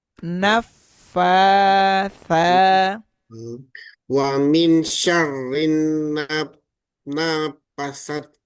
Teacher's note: fanya dipanjangin dua harakat